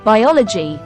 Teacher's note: The I in biology falls at the end of a stressed syllable and it sounds long.